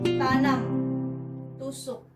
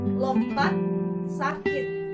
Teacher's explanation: T bunyi lepas jika diikuti oleh vokal, contoh tanam, tusuk. T bunyi tak lepas jika terdapat pada suku kata tertutup, contoh lompat, sakit.